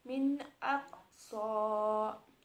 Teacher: Misalnya, min aqsa, tidak ada dengungan, ada huruf nun mati bertemu alif, maka harus dibaca jelas. Selanjutnya ada idgham. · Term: izhar halki